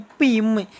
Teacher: மேல் இதழும் கீழ் இதழும் பொருந்துவதால்